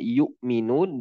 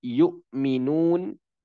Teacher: Sebagian orang Arab itu, ya, sebagian lahjah mengatakan yu'minun bil habzi, maksudnya dengan tahqiq. Ya, tahqiq ini, ya, dengan menjelaskan hamzah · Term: tahqiqul hamz